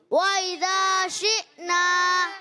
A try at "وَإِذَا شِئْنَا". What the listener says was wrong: عین کی آواز نہیں آئے، شی حمزہ۔ وَإِذَا شِئْنَا